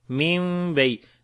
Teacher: After the noon sakin you can see it is ba here, we make iqlab, like this noon we convert into meme, that's why this little meme is there.